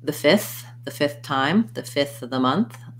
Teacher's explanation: so ideally you can put the whole thing in fifth but you'll hear that often that f will drop off and people will just say the fifth